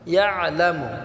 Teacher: আইনটাকে আমরা গলায় চাপ দিয়ে সাকিন করব